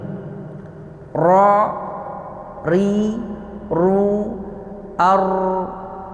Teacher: Ro ujung lidah bertemu dengan gusi gigi seri atas